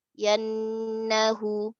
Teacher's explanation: nun syadda fathah bi gunna harakatain